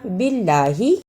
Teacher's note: باللہ یہاں اللہ سے پہلے زیر تھا اس لیے ہم نے اس کو نرم زبان سے ادا کیا۔